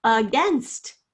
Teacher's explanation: The first syllable has the schwa, that short, sort of lazy sound